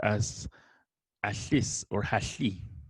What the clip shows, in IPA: aɬis